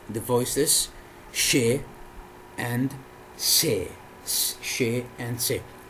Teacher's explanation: the front of the tongue, not the tip, the front of the tongue goes towards the area between the alveolar ridge and the hard palate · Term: alveopalatals